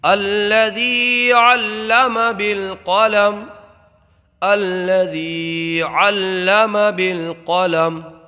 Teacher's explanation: ایسی حرکات کو ہم عارضی حرکات بولتے ہیں، تو اس کو ہم الذی پڑھیں گے وصل میں، ذال کو باریک پڑھیں گے، اور یہاں پر یا میں مدہ ہوگا، اس لیے کہ یا ساکن سے پہلے حرف ہے، یا کو ایک الف کھینچ کر کے پڑھیں گے